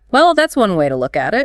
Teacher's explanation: The slightly falling intonation on, Look at it.